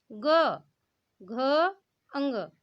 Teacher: आप जब ग बोलते हैं तो आपने देखा होगा कि आपके गले से एक कंपन हो रहा है, गले में एक कंपन हो रहा है। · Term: सघोष